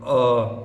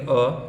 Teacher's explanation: इसको उच्चारण जब करेंगे अ, तो आपको ऐसा लगेगा कि जीवा का मध्य भाग यूज हो रहा है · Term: मध्य स्वर